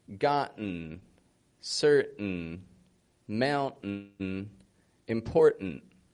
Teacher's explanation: they're all two syllable words the first syllable is strong in them the vowels pronounced fully whereas in the second syllable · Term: glottal T